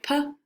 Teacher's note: our top and our bottom lip touch the air is stopped right when our lips touch the air stops briefly and the